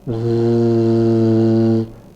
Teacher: When I produce a sound like zzz, I can hear a vibration at the larynx.